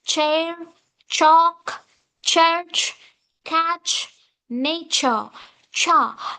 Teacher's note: represent it as like t followed by sha sound. Closive sound is followed by africative cha.